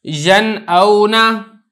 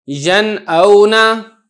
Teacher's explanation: اب مثالیں دیکھ لیں، ینعونا، اب یہ نون ساکن ہے، اس کے بعد حمزہ آ گیا تو دیکھیں میں نے نون پہ غنہ نہیں کیا، اس کو ظاہر کر کے پڑھا ہے، ینعونا، اس طریقے سے۔